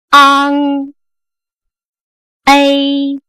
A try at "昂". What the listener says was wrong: 这 个 ▁A ▁发 的 就 不 对 ， 是 ▁A ▁A 再 大 点